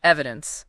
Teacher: accent on the first syllable